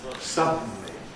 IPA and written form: ˈsʌdn̩li (suddenly)